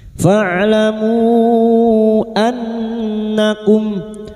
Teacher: Bertemunya mad dengan hamzah di lain kalimat mad jaiz munfasil. Mad jaiz munfasil empat atau lima harakat kita panjangkan. · nun yang bertasdid guna musyaddadah kita dengungkan selama 3 harakat